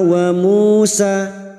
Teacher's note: dum diikuti wau sukun dua harakat kita panjangkan